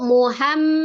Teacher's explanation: Ya, di situ Muhammadun dia ada mim tasdid, mim musaddadah. Mim tasdid itu hukumnya wajib gunnah, gunnahnya akmal matakun, paling sempurna ya.